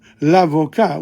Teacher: But notice what happens in l'avocat. We don't pronounce the T.